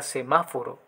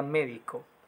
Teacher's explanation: el acento siempre va en la tercera sílaba, empezando por el final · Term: Esdrújulas